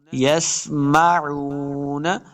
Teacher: لا يسمعون، یسمعون، عین کو تلفظ کے ساتھ پڑھیں گے، عین پیش واو، واو مدہ، اس کو دو حرکات لمبا کریں گے